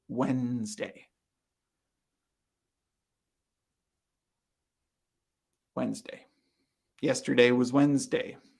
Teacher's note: So the D, the first D, is silent.